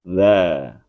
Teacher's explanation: Tempat keluar dza dan d adalah sama, yaitu bagian atas ujung lidah bertemu dengan ujung gigi seri atas dan ujung lidah keluar sedikit. Bedanya za dibaca dengan bacaan tipis atau istifal. Jadi posisi pangkal lidah rileks